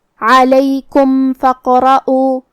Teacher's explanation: کلمت علیکم کے آخری میں میم ساکن ہے، یہاں میم کا حکم ہے اظہار شفوی، تو ہم حرف المیم کو ظاہر کریں گے اور بغیر غنہ سے یہ حکم کو ادا کریں گے · یہ حمزۃ وصل ہے تو ہم حمزہ کو ظاہر نہیں کریں گے، فا کے بعد حرف القاف پڑھیں گے، جو کہ قاف پہ جزم ہے، تو یہاں قاف کو ہمیں قلقلہ سے پڑھنا ہے، مطلب ہم قاف کو ہلاتے ہوئے یہ کلمہ کو پڑھیں گے۔